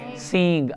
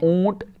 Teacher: ادا کرتے وقت ناک میں آواز اس طرح جاتی ہے جس طرح سینگ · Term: اخفاء حقیقی